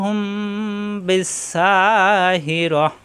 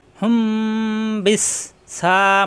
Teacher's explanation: হুম গুন্না বা আসার কারণে, মিম সাকিনের পরে বা আসার কারণে গুন্না। মিম সাকিনের পরে বা আসলে মিম সাকিন গুন্না হয়